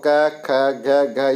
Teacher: आप बोल के देखो तो आपके कहाँ से आवाज़ आएगी? ध्वनि कंठ से आएगी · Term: कै वर्ग